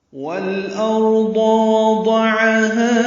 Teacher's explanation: وضعها میں واو ہونٹوں کی نا تمام گلائی سے ، دو پر جلدی پڑیں، عین وسط حلق سے ادا کریں